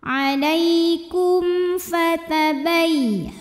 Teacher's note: Kum ada izhar syafawi, karena mim sukun menghadapi huruf selain mim dan ba. Di sini hurufnya fa, maka mim terbaca dengan jelas. Alaikum fatabai.